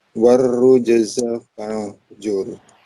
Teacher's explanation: Ro-nya ditasydid. Ro-nya tasydid, zal-nya dipendekkan.